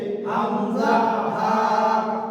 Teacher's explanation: এক নাম্বার মাখরাজ হলকের শুরু হইতে